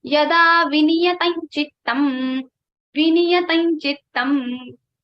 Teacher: So Anuswara's sound will be like ng. So you can see yada vinyatam Anuswara has changed into nya